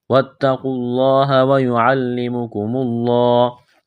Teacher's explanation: لفظ اللہ کے نام سے پہلے پیش ہے، لفظ اللہ کے نام کو موٹا کرنا ہے، اس واو اور الف کو نہیں پڑھیں گے.